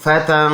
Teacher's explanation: ناک میں آواز لے کے جائیں گے، وہ بھی ایک الف کی مقدار